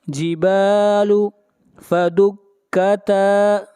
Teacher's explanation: تا کو بھی کھینچ کر پڑھیں گے، الف مدہ ہے